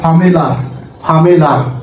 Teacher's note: আ উচ্চারিত হচ্ছে। যদি আ উচ্চারণ হয় এবং এর পরের এই ওয়ার্ডের প্রথম ওয়ার্ডটি যদি ভায়েল হয়, সেক্ষেত্রে এখানে আমরা বলবো যে ফামেলার, অর্থাৎ অতিরিক্ত র সাউন্ড উচ্চারিত হচ্ছে, র হচ্ছে, অর্থাৎ ফামেলার, ফামেলার। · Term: ইন্ট্রুসিভ আর